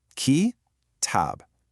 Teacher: It has a short start, followed by a long stretch. The first part, ki, is short and quick. The second part, tab, is long. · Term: short, long